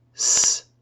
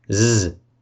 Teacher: s is voiceless and Z is voiced